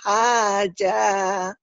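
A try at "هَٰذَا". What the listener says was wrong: Haja haza. Emang orang Betawi haja haza zal. Kurangnya haza, di sini. haza.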